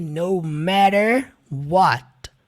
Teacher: Perceba que aqueles dois T's é pronunciado com o som de R.